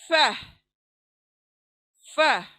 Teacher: अच्छा इसका मखरज क्या है ये पहले बता दूं। होठ, हमारे ऊपर की जो दांत हैं उसका किनारा गीले हिस्से पर लगेगा, होठों का जो नीचे का गीला हिस्सा है उसको लगने से ये फ अदा होगा